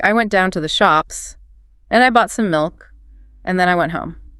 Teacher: >> What does it actually do? >> Australians frequently end declarative statements, simple facts, with an upward rising pitch at the very end of a sentence. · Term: HRT